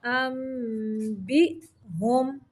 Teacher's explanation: ام پہ اقلاب کا قاعدہ ہے، نون کی آواز کو میم میں بدل کے پڑھیں گے۔